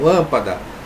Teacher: lâmpada, olha aqui, ó, a antepenúltima mais forte. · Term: proparoxítona